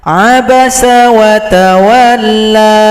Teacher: kalau berhenti di sini, tanda bendera tidak laku, la cukup dipanjangkan dua ketukan.